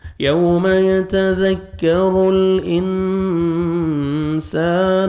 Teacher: اخفا کریں گے، نون ساکن کے بعد سین ہے، نوز میں ساؤنڈ لے کے جائیں گے